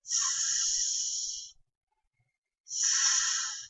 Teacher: La punta de la lengua toca parcialmente el alveolo. Aquí es donde se articula el sonido.